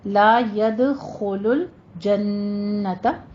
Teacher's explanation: دھیان رکھیے گا لام کے آگے جو الف ہے اس کو پورا ادا کرنا ہے. لا ید، ید پہ آپ نے قلقلہ کرنا ہے، خو کو پر پڑھنا ہے، ہونٹوں کو گول کیجیے · جنت کے اوپر نون مشدد ہے، غنہ واجبہ